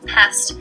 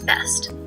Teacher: Voice onset time is an integral part of speech that influences our perception of a word's meaning. The delayed onset for the p sound, for example, is what allows us to perceive pest as a different word from best.